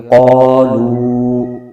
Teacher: قا، اور آگے لام پر پیش ہے، آگے واو ساکن ہے، اس سے پہلے پیش ہے، تو یہاں پر واو مدہ ہو رہا ہے، اس کو ایک الف کھینچیں گے، یہ ہو جائے گا قالو۔